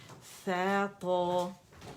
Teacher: جب آپ ثا ادا کریں گے تو تھوڑا ہوا باہر نکلے گی لازمی اس میں نا. ساکن پہ تو نکلتی ہے لیکن اس پہ بھی آپ کو فیل ہوگی.